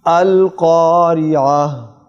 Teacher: جب ہم وقف کریں گے تو ایسے محسوس ہو کہ آپ کے سینے سے ہا کی آواز آنی چاہیے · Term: حلق والی ہا